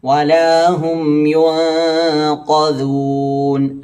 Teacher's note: ദാലിന്റെ മഖറജ് നമ്മുടെ നാവിന്റെ അറ്റവും അതുപോലെ തന്നെ മേലെ മുൻപല്ലിന്റെ അറ്റവും അപ്പൊ ആദ്യം നാവ് ആ മേലെ മുൻപല്ലിൽ കൊണ്ടുവന്ന് വെക്കുക.